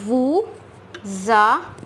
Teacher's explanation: So here we will form a liaison. We will take the S and link it with A, which is a vowel. So it will become za.